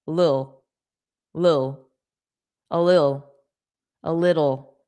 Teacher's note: Little, dull, little. A lot of native speakers make it more unstressed and just say lil, a little.